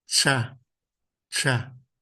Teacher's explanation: a língua tá encostando no palato e o som sai pelos lados da língua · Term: palatais